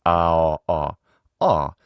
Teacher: Now, in addition to ah as in father, a lot of English speakers have a rounded version of ah. So, let's round the lips with that one.